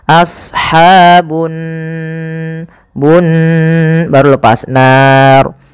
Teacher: Kemudian pada lafal annar di sini ada ghunah. Pada lafal nun cara membacanya yaitu ditahan suara nunnya.